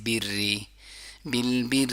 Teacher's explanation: جب را کے نیچے کسرہ ہو تو پھر باریکی سے پڑھا جاتا ہے